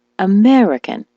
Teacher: the word American as you know is stressed on the me